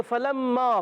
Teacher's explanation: اوپر دانت کنارہ اور نیچے والے ہونٹ کا تر حصہ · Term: فا